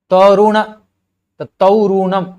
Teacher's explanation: यहां पर देखिए बीच में त और रू के बीच में उ चला आया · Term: मध्य स्वरागम